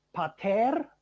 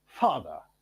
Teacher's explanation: Now, if we look at the initial elements, we have in the classical languages a bilabial plosive, and in English, a labiodental fricative